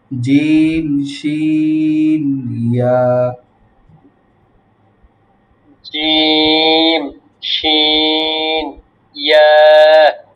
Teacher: জিহ্বার মধ্যখান হইতে তার বরাবর উপরের তালুর সঙ্গে লাগাইয়া উচ্চারিত হয়